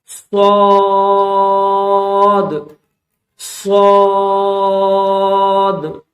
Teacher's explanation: اور اس کے بعد اگلا لفظ ہے صاد، سیٹی کی آواز کے ساتھ تھوڑا موٹا کر کے اس کو پڑھا جائے گا